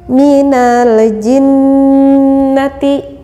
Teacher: makhrojnya yang keluar dari al-khaisyum yaitu dari rongga hidung ketika eh kalau tidak percaya ketika hidung kita tertutup maka akan · Artinya nun yang mati yang disamarkan cara pembacaannya yang keluar dari rongga hidung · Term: ghunnah musyaddah, gunnah musyaddad